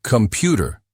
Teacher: Computer stress on the second syllable. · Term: word stress